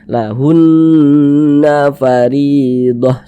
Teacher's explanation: yang kita tahan, kita panjangkan tuh hunnya, bukan nanya.